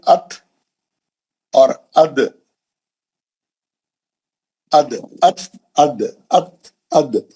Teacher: تو آپ کے دانت، آپ کی زبان کی نوک جا کے دانتوں کے جڑ میں لگتی، تو وہاں سے نکلتا ہے تا اور دال. ات اد ایک ہی مخرج ہے لیکن تا ہے اور دال ہے.